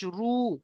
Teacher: জাবার অথবা পেশ থাকে র উপরে যদি জাবার অথবা পেজ থাকে র পুর হবে অর্থাৎ মুখকে গোল করে পড়তে হবে